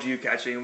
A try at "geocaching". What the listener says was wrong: caching, not catching.